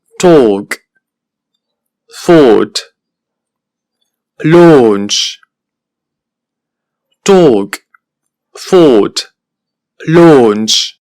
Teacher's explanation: es una vocal larga como podemos apreciar y porque se pronuncia con los labios redondeados